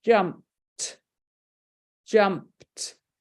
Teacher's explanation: that Ed isn't sounding that e isn't sounding is making a t sound so it's only got one syllable in that word